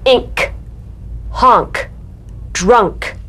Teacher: In words ending in NK, you need to play the K drum beat.